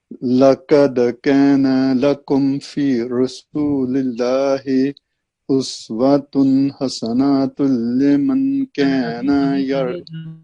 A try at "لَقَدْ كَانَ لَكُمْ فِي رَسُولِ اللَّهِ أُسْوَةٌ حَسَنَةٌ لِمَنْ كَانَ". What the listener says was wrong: again you have extended na, hasanatun, hasanatun. Remember, if there is a break in between because of a break in breath, then you have to do full word. Hasan.